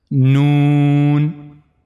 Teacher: the tip of the tongue and it will go connect to the gum of the two top front teeth from the internal side